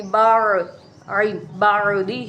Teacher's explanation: عین حروف حلقی میں سے ہے اس لیے عین کی آواز آئے گی